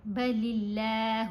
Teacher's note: لام کے نیچے زیر ہے نا، اس لیے لفظ اللہ کی لام کو باریک پڑھا گیا. بل اللہ، اسمائلی فیس کے ساتھ لام پڑھی جائے گی، گول نہیں کرنا منہ کو.